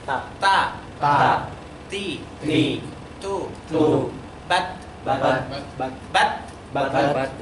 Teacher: Harus keluar sedikit hams. Udara keluar.